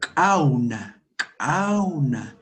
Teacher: Es al fondo con postvelar, con la parte postvelar de nuestro aparato fonador.